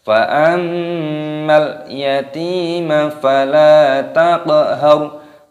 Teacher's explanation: Ada mim tasydid, ini hukumnya dibaca gunnah, dibaca berdengung.